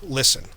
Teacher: for air to flow through so when you breathe through it instead of the closure popping open the air curls around the sides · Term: lateral approximant